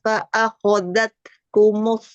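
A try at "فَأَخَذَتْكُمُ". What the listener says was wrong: Zalnya? Akhadha, za, za. Lembut, lembut lagi Ukti. Za, fa'akhadhatkum.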